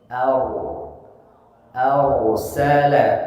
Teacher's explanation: huruf ro sukun diawali dengan fathah cara bacanya ditebalkan r-nya